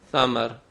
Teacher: اگر ہم سے ادا کرنا چاہیں گے آواز باریک کریں گے بغیر سیٹی کے، زبان کی نوک اوپر کے دانتوں کے کنارے سے لگائیں گے